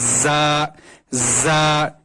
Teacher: اس میں سیٹی نکلتی ہے ہلکی سی زبان سے، دونوں دانتوں کے درمیان سے